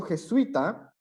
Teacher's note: En cambio, en la palabra jesuita, por ejemplo, que es un diptongo, las dos vocales van a quedar dentro de la misma sílaba